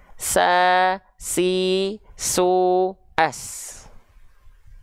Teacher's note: Huruf sin pun punya sifat hams, mengalir nafas.